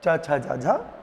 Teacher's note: स्पर्श व्यंजन की वे ध्वनियां हैं जिनमें उच्चारण के साथ-साथ घर्षण भी होता है। इसलिए इन्हें स्पर्श संघर्षी भी कहते हैं।